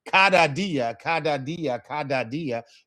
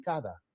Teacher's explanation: when we pronounce it, it's not going to be a hard D sound. It's not going to be cada dia, cada dia, cada dia.